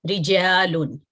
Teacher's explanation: را کے نیچے کسرہ ہے، اس کو ہم باریکی سے پڑھیں گے، منہ کھول کے پڑھیں گے. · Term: ترقیق